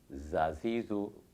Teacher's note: ज़रा सा ज़ुबान का जो किनारा है और सामने के नीचे वाले दांतों के किनारे से टकराए तो ज़ा अदा होता है। मखरज के एतबार से इसका नाम असलिया है।